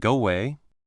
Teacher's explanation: It often sounds like go away. The O sound at the end of go flows right into the sound at the start of a way. It is like the words are holding hands and dancing together.